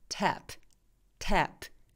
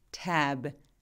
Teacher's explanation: 근데 이분이 질문 주셨을 때 이게 되게 좋은 예시인 게 뭐냐면, 저렇게 tap처럼 무성음 있죠. 바람 소리로 끝나는 발음들은 tap 이렇게 조금 빨리 끝나요. tap. 근데 tab처럼 B처럼 이렇게 유성음으로 끝나는, 울림이 있는, 성대가 울리는 소리들을 유성음이라고 하거든요.